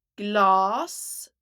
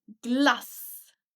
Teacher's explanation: Glass, the A is long, and glass. Here the A is short and the double S is long.